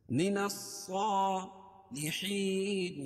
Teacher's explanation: کھڑا زبر قائم مقام الف مدہ کے اس کو کھینچ کے پڑھیں گے اور صاد کو موٹا پڑھیں گے